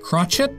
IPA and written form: ˈkrɑtʃɛt (crotchet)